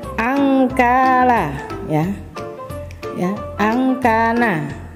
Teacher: cara membacanya itu lebih dominan ke dengung daripada samarnya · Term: ab'ad